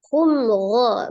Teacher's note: mim sukun bertemu dengan huruf ghain izhar safawiyah dibaca dengan jelas